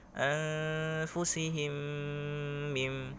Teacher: Anfusihim mim yakni huruf mim yang berharakat sukun bertemu dengan huruf mim tasydid berharakat kasrah gitu. Caranya yakni dengan didengungkan, diidghamkan, dimasukkan ke dalam huruf mim berikutnya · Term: idgham mimi